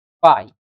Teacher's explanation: perceba que em pai eu começo no A e desço para o I. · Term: ditongo decrescente